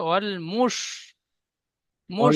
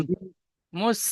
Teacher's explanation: আহালিল কিতাবি ওয়াল মুশরিকিনা এখানে দাঁড়ান, ওয়াল মুসরি বলছেন, এখানে শিন আছে, শিন উচ্চারণটি মোটা আওয়াজ হবে।